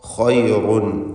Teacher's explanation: ഖൈറുൻ ഖായിനും റായിനും തഫ്ഖീം. റായിൻ്റെ തൻവീൻ ശേഷമുള്ള വാവിൽ ലയിപ്പിച്ച് മണിക്കണം.